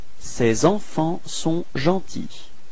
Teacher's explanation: you will have to make this small link, la liaison between c'est and enfant